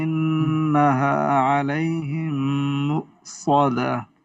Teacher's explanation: یہاں پر غنہ کریں. ان نون مشدد غنہ ہے.